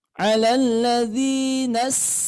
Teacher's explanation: di huruf Sin ini terdapat sifat istifal artinya itu lisannya terhampar di bawah sehingga bunyinya tipis ya bunyinya tipis kemudian ini mempunyai sifat rakwah yang suaranya itu